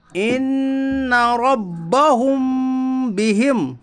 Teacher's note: میم ساکن کی آواز کو ناک میں چھپا کر غنہ کے ساتھ پڑھیے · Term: اخفاء شفوی